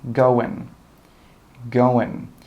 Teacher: native speakers don't say going with that ing sound. They get rid of the G and they just say going.